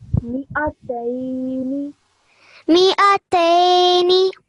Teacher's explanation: Make sure you stretch the tay sound out for a bit longer